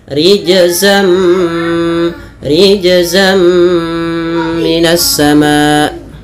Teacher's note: tanwinnya masukkan idgam memasukkan berarti masukkan tanwin ke huruf mim awalnya rijzan ketemu mim menjadi rijzam nunnya diganti dengan mim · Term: idgham bighunah